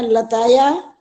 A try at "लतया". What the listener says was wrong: हाँ लताया है ना, तो इसमें थोड़ा सा अंतर होता है, ये ताया नहीं होता।